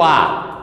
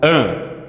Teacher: Nós chamamos isso de nasalização. É diferente o A, que sai todo pela boca, nós chamamos de oral, para o AN. Metade sai pelo nariz.